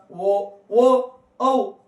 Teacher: ಕಂಟ ಮತ್ತು ತುಟಿಯ ಸಹಾಯದಿಂದ ಹುಟ್ಟಿರತಕಂತ ಅಕ್ಷರಗಳನ್ನ ಕಂಟೋಷ್ಟ್ಗಳು ಅಂತ ಕರೀತೀವಿ